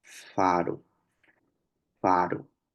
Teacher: la salida del aire es continua o sea es permanente no pero hay una fricción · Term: consonantes fricativas